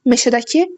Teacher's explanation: Meşədəki sonuncu hecaya düşür.